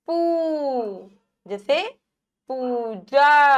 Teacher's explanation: उ थोड़ा सा हम मात्रा को खींच रहे हैं बड़ा ऊ